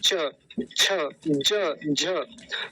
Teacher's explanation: तो जब च बोला हमने तो हमारी जिह्वा जहां जाके लगती है वो तालु होता है हमारा। च बोलिए, दांतों के ऊपर जो उभरा सा हिस्सा है ना, मांस का हिस्सा सा उभरा हुआ, वो तालु होता है हमारा।